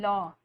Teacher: जिसके उच्चारण में जीहवा का अगला भाग मसूड़ों को छूता है और वायु पार्श्व आसपास से निकल जाती है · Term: पार्श्वक